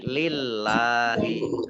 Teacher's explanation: kalau huruf di harokat di depannya itu kasrah maka Allahnya dibaca tipis